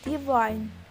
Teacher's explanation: Because the first syllable in the word divine is weak, so the stress will fall on the last syllable.